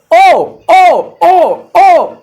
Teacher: ओ जो होता है वो कंठ प्लस ओष्ठ की मदद से हो जाएगा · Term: कठोष्ठ